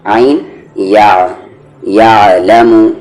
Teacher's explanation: دھیان سے عین کو آپ کو بیچ والے حلق سے بولنا ہے، یا نہ کہ آپ یا، یا تو یہ حمزہ ہو گیا.